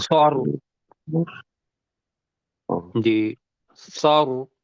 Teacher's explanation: رو کے ساتھ جب ملائیں گے تو رو کو موٹا پڑھنا ہے